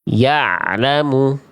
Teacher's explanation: bunyi ain sukunnya diantar sampai melafalkan lam